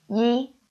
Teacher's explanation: yi, when we say it out, is first tone